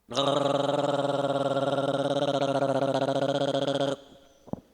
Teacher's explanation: Então as cordas vocais também vão vibrar. Então eu vou ter o vibrante múltiplo uvular sonoro.